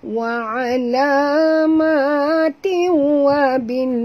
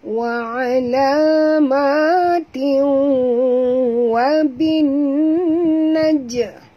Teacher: tin tanwin bertemu dengan wa, masuk dan dengung idgham ma al gunnah, ya, masuk dan kena dengung. · Dengung dulu. Baru lepaskan pada waw.